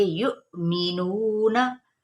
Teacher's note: मीम की जेर को बारीक करते हुए इस हरकत को लंबा नहीं करेंगे · वाव के ऊपर हमजा और ऊपर साकिन की इलामत है, तो यहाँ पे हम झटका देंगे।